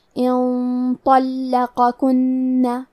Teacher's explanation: کیونکہ طو حروف التفخیم میں سے ہے اور غنہ اپنے اگلے والے حرف کا حکم لیتا ہے تفخیم میں اور ترقیق میں، تو ہمیں غنہ کو بھاری آواز میں ادا کرنا ہے